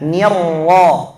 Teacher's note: Nirrahim, jangan lupa ra-nya langsung tebal. Nirra, dan jangan monyong, jangan baca nirra, salah, bukan niru, tapi nirra.